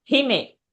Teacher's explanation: He is short and me is long.